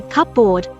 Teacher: the p and B of the spelling have long since merged in pronunciation